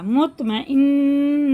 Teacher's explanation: مخرج ایک ہی ہے، توئے اور تا کا، لیکن تا باریک ہوتا ہے اور توئیں پر ہوتا ہے